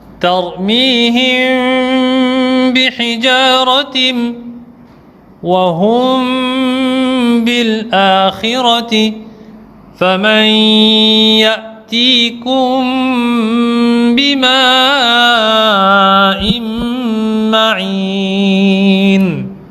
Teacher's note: cette lettre mim sera dissimulée en faisant le runna, c'est-à-dire on fera le ikhfa et shafawi.